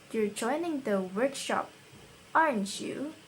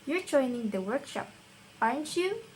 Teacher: if we use the rising pattern instead, then we're genuinely asking.